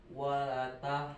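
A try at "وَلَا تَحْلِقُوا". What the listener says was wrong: Lanya panjangin ada alif.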